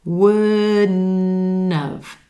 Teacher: The tongue tip comes up for the D sound and then stays there as the air shifts to the nose for the N.